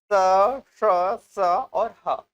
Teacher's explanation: वे वर्ण जिनके उच्चारण में वायु घर्षण के साथ मुख से बाहर निकलती है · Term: ऊष्म संघर्षी